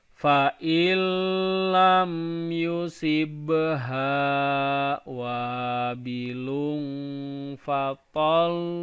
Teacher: Jadi ketika baca tol itu ditekan 2 harakat.